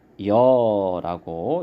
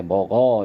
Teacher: 이모음이랑 어모음이랑 만나면 여모음으로 줄어들어요. 그래서 이런 경우는 먹여라고 이렇게 발음도 하고 쓰기도 합니다.